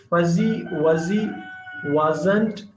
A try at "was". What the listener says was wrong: Now, some S's in English sound like Z. In this case, was. So it's not was, was.